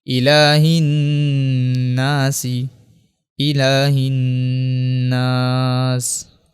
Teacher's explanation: ہا کو دوبارہ نون سے ملائیں گے، الف لام کو یہاں پہ دوبارہ نہیں پڑھیں گے، چونکہ نون کے اوپر جو ہے وہ تشدید ہے اس لیے یہاں پہ غنہ کریں گے۔ الہ، نون الف زبر نا، الہ نا، سین زیر سی، الہ الناس، الہ الناس۔